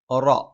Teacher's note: നാവിന്റെ തലയുടെ മുതുക് മേലെ മുൻപല്ലിന്റെ മോണയിലാണ്